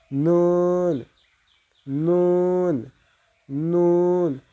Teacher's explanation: জিহ্বার আগা সামনের উপরের দাঁতের গোড়ার সঙ্গে লাগিয়ে উচ্চারিত হয়